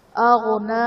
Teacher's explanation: غین حرف مستعلیہ ہے تو اسے ہم خوب پر کر کے پڑھیں گے